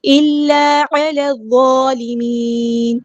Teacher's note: لام یہاں پہ لام شمسیہ ہے، اس کو ہم ظاہر نہیں کریں گے، اور نون کو ہم ساکن کر دیں گے وقف کرتے ہوئے، اور مد عارض بھی ہوگی.